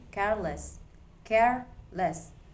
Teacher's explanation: The stress stays on care. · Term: stress preserving suffixes